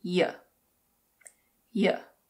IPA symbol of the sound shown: jə